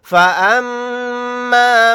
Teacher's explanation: میم کے اوپر تشدید ہے تو یہاں پر غنہ کر کے پڑھیں گے